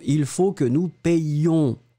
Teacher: le yé, il est un petit peu plus long. On doit faire la différence entre nous payons au présent de l'indicatif et nous payons qui doit être légèrement plus long.